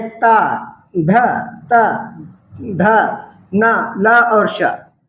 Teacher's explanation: जीभ का अग्रभाग हमारे दांतों को स्पर्श करे, वहां पर दंत होगा।